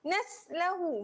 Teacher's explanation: Sin huruf yang apabila sukun dia ada angin. Naslahu nipis.